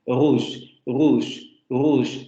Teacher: El de la variante estándar sería el aproximante fricativo uvular sonoro